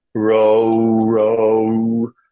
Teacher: They don't need to think of the O as diphthonging.